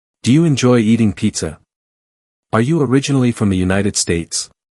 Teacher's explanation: one big clue lies in the tone of voice used at the end. It rises gently, indicating that the speaker is expecting an answer. This rising pitch typically accompanies yes or no questions, especially those formed using the auxiliary verb do or the B verb such as are or is.